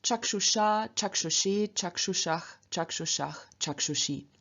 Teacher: in front of these vowels, us changes into ush through the Ruki rule